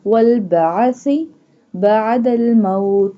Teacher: Sa pronounced from the tip of the tongue touching the inner edges of the top two front teeth.